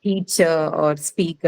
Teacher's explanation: the last suffix which is essentially the schwa sound, that doesn't take any stress. Okay, that's called an unstressed vowel.